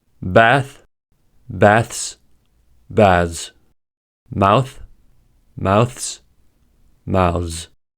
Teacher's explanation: in their plural forms, they can be pronounced either voiced, ths, or voiceless, ths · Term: th sound